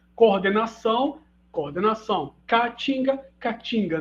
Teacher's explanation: iatos de vogais orais tendem a ser evitados o PB né no português brasileiro então ocorre a monotongação quando eu tenho eato de vogais iguais coordenação coordenação Catinga Catinga